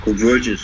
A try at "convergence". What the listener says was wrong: you said converse. You said converse.